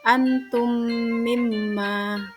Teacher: Idgham mithli terjadi ketika mim sukun bertemu dengan huruf mim yang berharokat. Cara membacanya adalah dengan memasukkan huruf mim sukun ke dalam mim yang berharokat dan didengungkan atau gunnah. Contohnya adalah pada kata antum mimma.